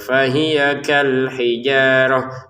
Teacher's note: ini kita bacanya sebagai huruf ha karena kita berhenti.